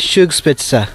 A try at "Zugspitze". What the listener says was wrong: Like, you don't pronounce the Z like Z. You pronounce it like S. Zug, like at the beginning the Z, you pronounce Zug. And then you pronounce Spitze.